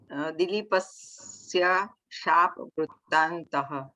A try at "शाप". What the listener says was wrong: शाप न अत्र हलन्त नास्ति. संस्कृते शाप. हलन्तास्ति चेत् एव हलन्तं वदनीयम्. नो चेत् सम्पूर्णम्.